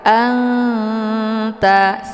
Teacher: ketemu huruf ta yaitu huruf ikhfa ini dinamakan dengan Ikhfa aqrab cara bacanya nunnya disamarkan kemudian siap-siap menuju ke huruf ta Anta sambil didengungkan namun dengungannya sedikit karena makna akrab ini adalah · Nun posisinya ujung lidah dengan langit sementara ta posisinya ujung lidah dengan ee gigi seri bagian atas